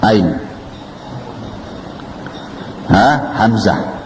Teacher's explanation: Sebab seperti contohnya Ain, kalau orang Quraisy membacanya Ain di pangkal tenggorokan, Ain. Tapi Bani Tamim membacanya pakai hamzah, tahmizul ain, membaca ain dengan hamzah. Jadi ain di ujung lidah, ain, hamzah.